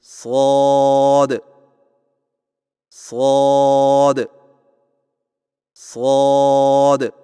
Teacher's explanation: آئیے مشق کیجیے، شین شین شین صاد کی ادائیگی میں زبان کی نوک کو سامنے والے نیچے کے دو دانتوں کے کناروں سے مضبوطی سے لگا کر اور زبان کے پچھلے حصے کو تالو کی طرف بلند کرتے ہوئے موٹی اور سیٹی جیسی آواز میں پڑھیں